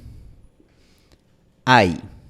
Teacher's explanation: Cuando tenemos el diptongo ay, lo que pasa es que la lengua se mueve desde la posición A hasta la posición I. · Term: el diptongo español ay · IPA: [aj]